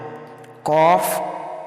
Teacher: जबान की जड़ और तालु के नर्म हिस्से से अदा होता है